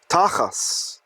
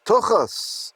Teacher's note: If you read it with Ashkenazi pronunciation, the German Jewish pronunciation, a tav without a dot in it is an S sound.